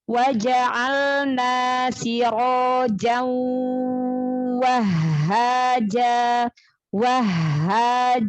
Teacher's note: idgham bi gunnah, tanwin ketemu waw, tahan juga gunahnya, dengungnya